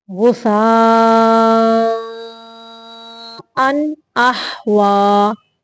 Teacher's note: صرف تنوین کو ظاہر کرنا ہے، غنہ نہیں کرنا اس پہ کیونکہ یہاں پہ اظہار کا قاعدہ ہے.